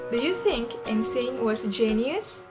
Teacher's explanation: So, the question in here is rising.